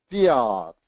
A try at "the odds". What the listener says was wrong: Excellent job. Great job.